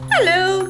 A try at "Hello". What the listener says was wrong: Oh, too low, another one. No, too mad, right? Another one.